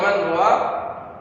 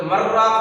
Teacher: نون ساکن کے بعد حروف اربعین میں سے را آ رہا ہے، تو ایسی صورت میں پھر اس کو یہ نون کا ادغام را میں ہو جا رہا ہے ، تو ایسی صورت میں مرراق ہو جا رہا ہے۔ تو